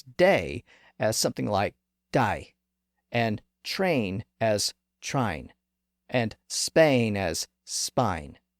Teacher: Cockney speakers sometimes pronounce day as something like die, and train as trine, and Spain as spine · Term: Cockney accent